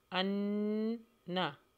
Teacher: غنہ ہوگا، نون کے اوپر مشدد ہے